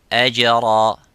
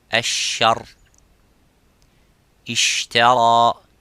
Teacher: The parts touch each other without leaving the gap. But the sheen has a gap, and that let the air slightly go